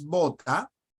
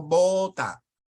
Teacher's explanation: la b y la v se pronuncian completamente igual